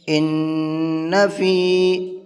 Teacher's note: ان فی خلق السماوات والارض واختلاف اللیل والنہار ان فی، نون کے اندر غنہ کریں گے اس لیے کہ نون کے اوپر تشدید ہے، اور فی کو کھینچ کر کے پڑھیں گے اس لیے کہ یہاں پر یہ یا مدہ ہے